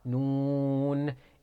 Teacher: it is pronounced from the tip of the tongue when it hits behind the upper incisors